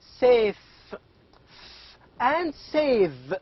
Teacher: the final sounds in the words like safe and save again these two sounds are called as labiodentals why because the upper teeth and the lower lip these two are responsible to produce these two sounds and the upper teeth is the passive articulator and the lower